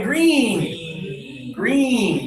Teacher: If these are your front teeth right here, okay, these are your front teeth, and this is the top of your mouth, and this is your tongue. Your tongue is high in your mouth, and just a little bit of air happens.